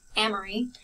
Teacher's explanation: when I say my name, I put the emphasis on the am.